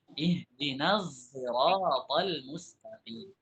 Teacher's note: Asalnya dari shad yang dicampurkan dengan zai.